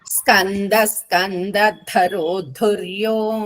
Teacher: ఉంది న కింద ద రెండు సంయుక్తాక్షరాలు మళ్ళీ సేమ్ రిపీట్ అయింది స్కంద ధరో ధొర్యో రెండు ధాలు కూడా మహాప్రాణాలు